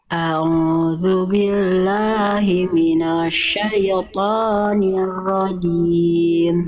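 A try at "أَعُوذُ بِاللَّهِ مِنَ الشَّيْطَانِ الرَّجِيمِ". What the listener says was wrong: Oke, ainnya kuatkan Bunda. Jelaskan mana hamzah mana ain. Ainnya kurang kuat. A'udzu billah dari tengah tenggorokan ain. A'udzu billahi minasyaitonir rajim.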